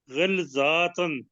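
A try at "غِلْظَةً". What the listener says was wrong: نہیں، اب دیکھیں زوئیں کے اوپر آپ نے کھڑی زبر پڑھ دی ہے، غلظاتن، غلظتن ہے، زبر ہے تو غلظتن، تو آپ نے آواز نکالی ہے وہ کھڑی زبر کی ہے، غلظاتن، کھڑی زبر، فرق کو محسوس کیجیے جی۔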